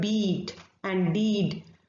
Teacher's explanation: during the production of these sounds we can hear the humming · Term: voiced sounds